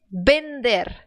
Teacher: o v ele tem esse som de B mas é um bem mais suave bem mais suavezinha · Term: B mais suave